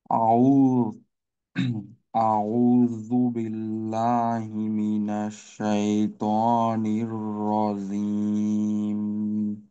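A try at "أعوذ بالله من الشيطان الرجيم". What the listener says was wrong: জিমের উচ্চারণটা জি ধরনের হয়ে যাচ্ছে।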